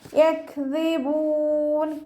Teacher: കാഫ് സുക്കൂൻ ആകുമ്പോൾ കുറച്ചൊരു എയർ പാസ് ചെയ്യുന്ന സൗണ്ട് കൊടുക്കണേ എക്ിബൂ ദാലിന്റെ സൗണ്ടിനെ ക്ലിയർ ആക്കി കൊടുക്കുക മഹ്റജ് നമ്മുടെ നാവിന്റെ അറ്റവും മേലെ · കാഫ് സുക്കൂനാവുമ്പോൾ കുറച്ചൊരു എയർ പാസ് ചെയ്യണ സൗണ്ട് കൊടുക്കണേ